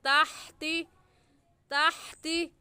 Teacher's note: हा हलक के दरमियान से निकलती है, हलक के दरमियान से निकालेंगे।